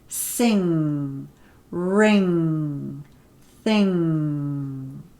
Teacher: so I'm stopping the air at the back of my mouth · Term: nasal sound